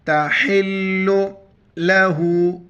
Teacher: ہا گلے ادا کر کے لام کے ساتھ ملائیں گے، لام پر شد ہے